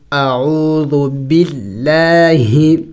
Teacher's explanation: یہاں پہ دیکھیں لفظ اللہ سے پہلے زیر آیا ہوا ہے. لفظ اللہ سے پہلے جب زیر آ جائے تو وہاں لفظ اللہ کو باریک پڑھا جائے گا